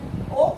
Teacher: ओ का उच्चारण स्थान कंठ और ओष्ठ होता है।